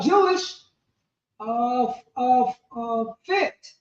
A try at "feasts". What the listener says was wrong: So those F's are because Old English, all those F's is how they wrote the S.